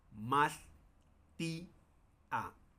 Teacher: El no es como juntar las vocales y leer como si fuese eh digamos como diptongos, sino más bien se separan.